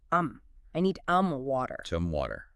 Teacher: Some is usually unstressed and pronounced with a schwa